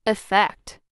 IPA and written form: ɪˈfɛkt (effect)